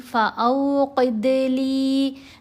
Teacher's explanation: अब देखें, गलती नहीं करनी, फ़ऊ नहीं पढ़ना, क्योंकि जब वाव लगती है तो गलती ये होती है कि पेश की तरह लोग पढ़ने लग जाते हैं। पेश की आवाज़ नहीं, ऊपर ज़बर है, आगे वाव है, तो दरमियानी सी आवाज़ बन गई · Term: वाव लीन